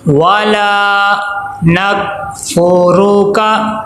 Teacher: लाम के आगे अलिफ मद्दा आ गया, एक अलिफ के बराबर लाम को लंबा करेंगे।